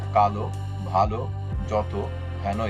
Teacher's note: 2 নম্বর, বাংলা কতিপয় বিশেষণ অথবা বিশেষণ রূপে ব্যবহৃত পদের অন্তে থাকা অকার সাধারণত ওকার রূপে উচ্চারিত হয় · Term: অন্ত অকার